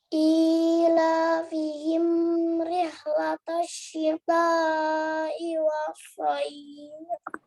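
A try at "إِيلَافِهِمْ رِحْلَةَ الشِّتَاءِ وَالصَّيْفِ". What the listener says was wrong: Oke, kurang tawasud ya. Malah lebih agak condong tertahan ya untuk oksel. Jadi mim ini tidak boleh tertahan kalau dia bertemu ro, tapi dia tawasud. Tawasud itu gimana sih?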